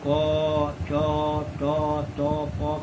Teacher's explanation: क, च, ट, त, प का अंतर प्रयत्न के कारण नहीं, स्थान के कारण है। ये ध्वनियाँ विभिन्न स्थानों से उच्चरित होती हैं।